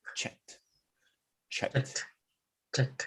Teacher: Just because of the k is a soft unvoiced k. So the ED is going to be a soft unvoiced t.